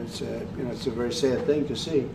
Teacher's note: That air in sad is trap raising, as we call it, raising the vowel that's in the word trap